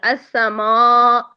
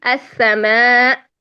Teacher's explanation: موٹا سا الف ادا ہو رہا ہے، جبکہ السماء یہ ہے باریک